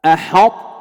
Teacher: الطاء هنا مدغمة في التاء، الطاء مدغمة في التاء، لو كانت مظهرة ستقلقل الطاء أحطت، لكن ليست مقلقلة فهي مدغمة، لكن الإدغام فيها ناقص، أدغمت الطاء إدغاما ناقصا.